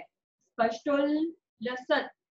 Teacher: ममलम भवतो नितान्तम् स्पष्टोल्लसत् आधा ला भी है पूरा ला भी है। स्पष्टोल्लसत् पहले आधा ला फिर पूरा ला।